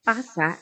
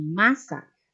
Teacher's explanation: Por ejemplo, en las palabras pasa y masa, la diferencia proviene del fonema inicial, cuyos rasgos son opuestos. P es bilabial oclusivo y sordo, mientras M es labial, nasal y sonora.